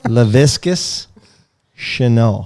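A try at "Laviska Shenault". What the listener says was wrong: Laviscus? There he goes with that S again at the end. Laviscus. Lavisca.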